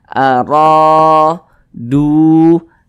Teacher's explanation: Sehingganya huruf ra dibaca panjang, mad tabi'i, panjangnya 2 harakat.